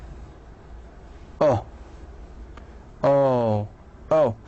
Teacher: So if I ask you to describe it, you just say it's actually back, okay, it's a back rounded vowel.